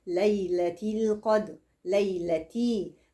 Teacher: الياء ساكنه قبلها مفتوح فهي حرف لين اديها شويه ليونه